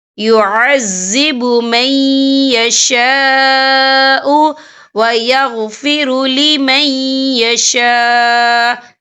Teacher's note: یہ مد جو ہے مد متصل ہے، اس کی مقدار 4 عدد کے برابر ہے، تو ہم اسے 4 عدد کے برابر کھینچ کے پڑھیں گے